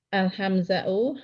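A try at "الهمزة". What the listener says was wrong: Al-hamzatu, Bu, bukan al-hamza'u. Hamzah pakai tak ya? Al-hamzatu.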